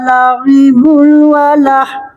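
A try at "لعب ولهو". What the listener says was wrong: La'ibu didengungkan Bu. La'ibu walah.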